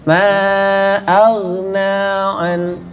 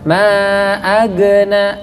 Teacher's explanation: huruf ghain itu bukan huruf qalqalah, jadi tidak kita pantulkan, bukan ma agna.